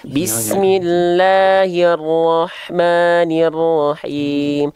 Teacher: hati-hati la dan maknya jangan sampai kepanjangan, 2 harokat saja